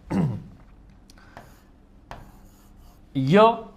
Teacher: ય નો ઉચ્ચાર તમે કરો ને તો તમને એવું ફીલ નહી થાય કે જીભ તાળવાને અડે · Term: અસ્પર્શ વ્યંજન